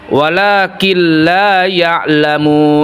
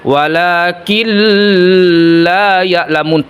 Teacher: Ketika proses idgam berlangsung, suara dibaca jelas tanpa didengungkan. Nah, dihilangkan nunnya tetapi ee tidak didengungkan tanpa dengungkan. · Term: idgam bila gunah